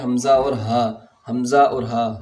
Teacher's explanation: ہا اور حمزہ کا مخرج ایک ہی ہے اور وہ ہے اقصی حلق